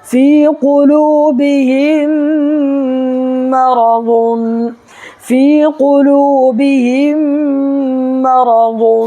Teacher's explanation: دیکھیے یہاں پر جو ہے یا ساکن ہے، یا ساکن سے پہلے فا کے نیچے زیر ہے تو یا مدہ ہوگا، اس کو ایک الف برابر کھینچ کر کے پڑھنا ہے